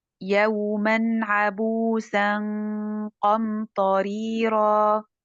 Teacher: Al-qaf, it's ikhfa letter, so it is, we will skip the tongue of the noon and we'll keep the nasal one